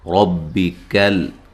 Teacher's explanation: میم کو لمبا نہیں کرنا، زبر زیر پیش والے حرف کو لمبا نہیں کریں گے۔ ربی کل، را کو موٹا ادا کریں گے، کل کاف کو باریک، لام کو ہلانا نہیں ہے